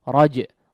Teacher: Raja' di situ ada qalqalahnya, raja ya, huruf jimnya ada qalqalahnya, maka perlu ditunaikan. Kemudian yang paling sering terjadi kesalahan di sini adalah huruf ainnya tidak terdengar ya, atau huruf yang kedua ini seolah dihapus atau tidak terbaca ya.